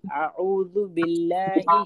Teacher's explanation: بل جب ہم کہہ رہے ہیں نا باللہ کا, تو لام کو موٹا نہیں کرنا, آرام سے پڑھیے باریک.